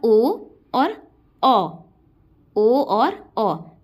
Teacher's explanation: कंठ से और ओष्ठ से दोनों का ही प्रयोग हो रहा है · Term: कंठ ओष्ठय